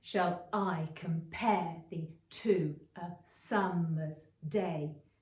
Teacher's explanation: alternating stressed and unstressed syllables that make the poem lines read like a da-dum, da-dum, da-dum sort of beat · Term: iambic pentameter